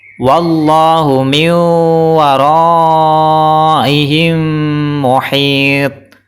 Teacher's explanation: Cara baca yang salah adalah wallahu min waraihim muhit. Salah, karena huruf ta tidak dipantulkan.